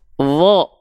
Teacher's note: ketika berharokat fathah dia tidak dibaca dengan terdengar seperti vokal vokal A, tapi terdengarnya seperti vokal O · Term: huruf yang tebal